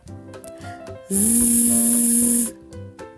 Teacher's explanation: до горла подзищі наче жук що летить чи як Комар з ти відчуваєш вібрацію голосових зв'язок